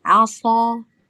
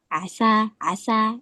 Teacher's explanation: Ketika kita tidak menebalkan aso, kan ada asa, ada aso. Ketika kita membaca aso tapi sotnya kita tipisin, membacanya dengan sin, itu jadi asa.